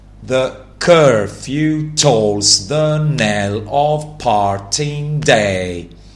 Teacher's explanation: Each line is iniamic pentameter meaning that each line has five pairs of syllables for a total of 10 syllables. In each pair, the first syllable is unstressed and the second is stressed. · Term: iambic pentameter